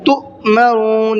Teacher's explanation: حمزہ ساکن کے پڑھنے میں جھٹکا ہوتا ہے، اس لیے ہم نے اس کو جھٹکے کے ساتھ میں پڑھا ہے۔